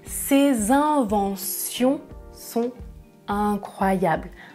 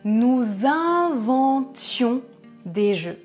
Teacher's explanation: quand il s'agit du nom, une invention, des inventions, je prononce sion, invention. Mais quand il s'agit du verbe à l'imparfait, je prononce tion, nous inventions.